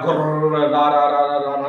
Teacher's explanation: बार बार प्रकंपन, बार बार कंपन होने के लिए रा। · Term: प्रकंपित